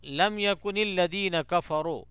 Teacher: تو لم یکن الذین کفروا، اس میں رو کو را کو موٹا کرنا ہے کیونکہ را پہ پیش ہے